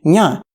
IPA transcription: ɲa